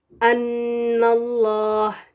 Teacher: नून के ऊपर जबर है जो कि अल्लाह के नाम से पहले है तो इसको इस लाम को हम मोटा पढ़ेंगे